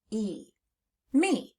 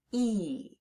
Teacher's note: that E, instead of making a short E sound, it's making a long E sound, E. And that's unexpected, so we need to learn that part by heart.